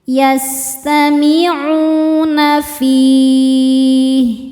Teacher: hukumnya mad thobi'i zohiri karena ada wau sukun sebelumnya dammah. Cara bacanya panjang dua harakat.